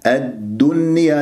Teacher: الدال شديدة، حرف قوي، الدال مخرجه قوي، مجهور